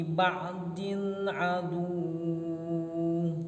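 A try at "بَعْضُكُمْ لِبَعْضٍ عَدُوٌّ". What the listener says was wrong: Jangan dipanjangin adu. Jadi ditahannya pas wawunya adu. Iya, jangan adu, jangan begitu. Adu.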